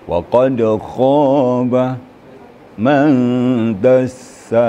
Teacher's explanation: Dia kha-nya sedikit lagi getarannya. Agak menggetar sedikit lagi ya.